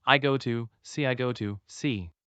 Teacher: Instead of saying got to separately, I ran the words together. And leave off the T at the end of God.